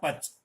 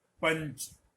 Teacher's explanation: पच और पंच के बीच में जो ध्वनि आ रही है, प और च के बीच में, वही चवर्ग के पंचमाक्षर की, स्वर रहित पंचमाक्षर की ध्वनि है।